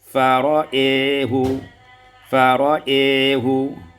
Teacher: Pada ayat 55 fara'ahu, imalah fathul hamzah, hamzatul wal alif, wal alifi, yaitu mengimalahkan fathah hamzah dan alif sehingga kita baca fara'ehu, fara'ehu.